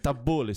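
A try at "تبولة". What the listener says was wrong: You gotta go bull, not bear. Bull, like tabbouleh. Tabbouleh.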